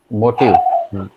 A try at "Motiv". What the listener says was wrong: Motiv. M-O-T-I-V. In English with an E. Motive.